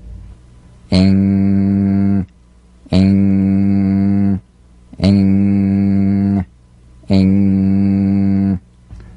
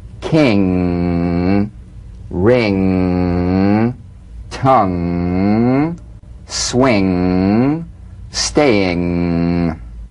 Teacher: NG is a voiced, tongue-backed, soft palate nasal consonant. So sing with the back of the tongue in contact with the soft palate. · Now, the use of the NG is more complex, and there's a common confusion about the correct use of the G or K drum beat following the NG. So, practice the final NG with no drum beat as the tongue leaves the soft palate at the end of the word.